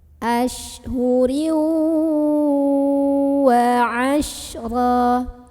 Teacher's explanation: tanwin kasrahnya ini dileburkan dengan huruf waw, masuk sambil dengung. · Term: idgham bi gunnah